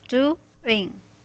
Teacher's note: So doing has 2 syllables, doing. So our stress is at the first syllable.